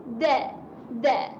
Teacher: Hujung lidah berjumpa dengan belakang gigi atas. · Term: huruf dal